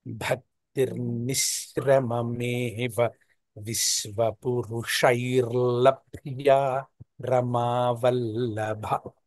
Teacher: ఏంటంటే భక్తిర్నిశ్రమమేవ తర్వాత విశ్వాలో తాళవ్య శకారం, అంటే కొంచెం మైల్డ్ గా ప్రొనౌన్స్ చేయాలి విశ్వ. తర్వాత పురుషాలో మూర్ధన్య షకారం ఉంటుందన్నమాట. ఆ భేదం మనకి తెలిసేటట్టు చెప్తే ఇంకా మీరు ఎక్స్పోనెంట్ గా ఉంటారు.